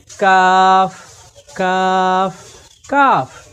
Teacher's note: তাহলে আমরা কফ এবং কাফের মাঝে পার্থক্য করতে পারি যে কফ অক্ষর জিহ্বার গোড়া থেকে কাকের আওয়াজের মতো মোটা করে পড়তে হয়, আর কাফ অক্ষরকে জিহ্বার গোড়ার একটু উপর থেকে চিকন করে পড়তে হয়